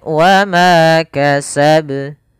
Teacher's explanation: mad tabi'i lagi, yaitu fathah bertemu dengan alif, panjangnya 2 harakat pada lafal ma. Kemudian kasab, nah di sini qalqalah kubra, yaitu qalqalah yang terjadi di akhir bacaan kita.